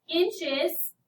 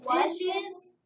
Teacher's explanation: adding a vowel sound between the two hissing sounds makes the word easier to say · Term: sibilant sound